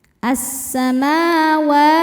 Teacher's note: Ma hukumnya mad thabi'i muqaddar karena ada mim berharakat fathah panjang. Cara bacanya panjang dua harakat.